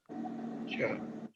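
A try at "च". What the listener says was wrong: Open your mouth. Cha will not come. So cha, cha, ja, jaya, entire set need the help of your cheeks and little inside upper part of your murdha, like between the tongue. Cha, cha, cha, cha, cha, cha.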